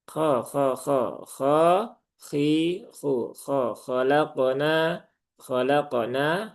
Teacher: huruf kha itu memang dia ada ini ya, ada ngoroknya, ada seraknya, tetapi wajar ya, natural saja. Kha, kha, kha, kha, khi, khu, kha, khalaqona, khalaqona, tidak perlu sampai khalaqona.